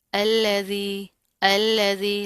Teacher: लाम बरीक है, तशदीद है, मजबूती से पढ़ेंगे, जाल बरीक है